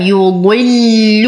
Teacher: وأخلص اللام من تفخيم الضاد